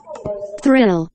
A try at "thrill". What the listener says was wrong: I를 계속 I라고 생각하고 있지, 지금. Thrill.